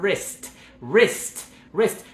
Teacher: Como si estuviéramos empezando la pronunciación con una R súper larga, que viene de la garganta, no viene de la lengua, como en el español.